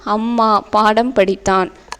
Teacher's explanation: அம்மா, இம், பாடம், இம் ஆகிய சொற்களில் மகர மெய்யெழுத்து மகர மெய்யெழுத்துனா இம்மு தான். இம் தனக்குரிய அரை மாத்திரை அளவில் முழுமையாக ஒலிக்கிறது.